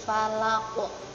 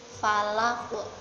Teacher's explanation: qolqolah kubro jadi harus di pantulkan dengan kuat